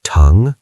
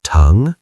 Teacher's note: It's a rising second tone. Teng. It sounds like tongue, but lift your voice up.